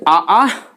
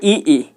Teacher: कंठ से आ, तालु से ई